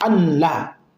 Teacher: Wanunu fi an la ilaha tudghamu, na nuni kwenye neno an la ilaha tudghamu inadighimishwa, inazamishwa na kuingizwa na kumezwa kwenye la. Unasema an la, yani idgham kamilan. · Maana bado kuna kinuni kinasikika ashhadu an la, yani kama vile nuni haipo alafu kuna lamu yenye shadda. Wan-nunu fi an la ilaha tudghamu wamdud ala al-lam bi sautin yufhamu.